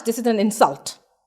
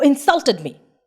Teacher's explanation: It is a verb. I stressed on the syllable sul.